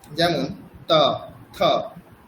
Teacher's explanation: মানে জিউভা দন্তে এসে স্পর্শ করবে। দন্তকে স্পর্শ করবে। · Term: ত বর্গ